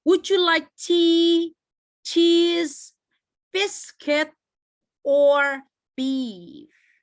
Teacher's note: Jadi selama dia ada opsinya, intonasinya akan terus naik ke atas. · Kalau dia opsinya udah selesai, biasanya dia menurun ke bawah. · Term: intonation of questions with or